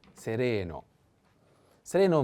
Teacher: i have to put the accent on the second e